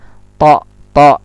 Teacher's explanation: to ini ujung lidah dengan pangkal gigi di atas